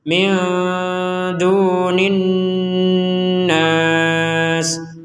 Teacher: Nin di rongga hidung kita berdengung dulu baru nas gitu.